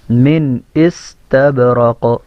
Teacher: سین کے اندر سیٹی کی آواز، با میں قلقلہ، کا میں قلقلہ · بطائنها من استبرق، یہ نون ساکن یا نون تنوین کے بعد دیکھیں آگے حروف حلقے میں سے اب حمزہ آ گیا نا، تو یہاں پہ من استبرق نہیں پڑھیں گے بلکہ یہاں پہ اس کو نون کو حمزہ سے ظاہر کر کے پڑھیں گے